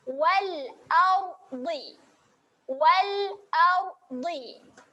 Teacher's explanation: huruf ra ini dibacakan tebal. Dibacakan tebal, kita muncungkan sedikit mulut.